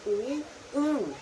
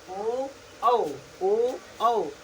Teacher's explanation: बोलने पे आपका जो लिप्स है वो गोल सा आकृति बना ले रहा होगा ना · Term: वृत्ताकार